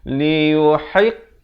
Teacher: Ha pedas makhrajnya di pertengahan kerongkong